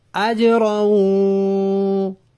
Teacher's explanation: جیم پہ آواز کو حرکت دیتے ہیں، اس کو قلقلہ کہتے ہیں